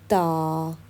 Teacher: जुबान की नोक हम जो है वह ऊपर के दांतों की जड़ों में अंदर की तरफ लगाते हैं